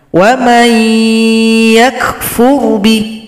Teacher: Kenapa ya-nya dengung? Karena terbawa sifat huruf nun. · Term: idgham naqis